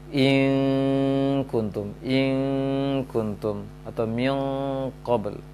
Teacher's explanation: nun sukun berada di ujung lisan ke gusi di atas, sedang kaf dan qaf berada di pangkal lisan.